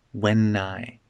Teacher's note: We connect the n and the I together.